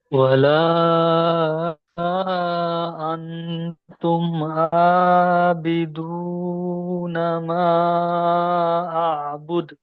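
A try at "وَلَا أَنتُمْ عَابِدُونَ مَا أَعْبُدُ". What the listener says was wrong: জি, এই জায়গাটায় আপনার একটু মিস্টেক হয়ে গেছে, এখানে ডবল আ উচ্চারণ হয়ে গেছে। ওয়ালা আন আনতুম আবিদুনা মা আবুদ।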